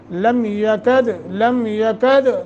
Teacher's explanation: ایک الف کے برابر لم یکد دال ساکن ہے قلقلہ کریں گے